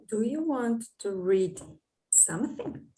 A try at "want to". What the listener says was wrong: Just remember, because you're to the point where you can do the pronunciation, native pronunciation, not want to, one T, right? Want to.